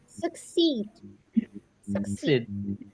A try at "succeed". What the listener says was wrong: Bukan sukses, ya. Succeed.